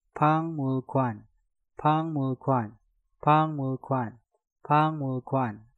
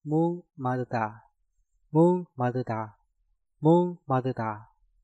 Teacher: Ketika sebuah kata diakhiri giok dan suku kata di depannya diawali mieum, maka gioknya dirubah menjadi suara ngiung.